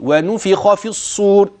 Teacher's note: الخاء مفتوحه مفخمه في اعلى مراتب التفخيم لا في المرتبه الثانيه لانها مفتوحه فقط